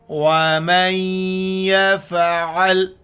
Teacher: دیکھو میم کو یا کے ساتھ ملا رہا ہوں، نون کو نہیں پڑھ رہا. نون یا میں ادغام ہو گیا. · ادغام کہتے ہیں کہ ایک لفظ کو دوسرے لفظ کے اندر ملانا، یعنی جب یہ ادغام ہوتا ہے تو پہلا لفظ نہیں پڑھا جاتا ہے. یہاں پر ادغام کریں گے اور اس کا غنہ بھی کریں گے، ناک میں آواز بھی چھپائیں گے. واو زبر و، میم یا زبر من، یا زبر یا.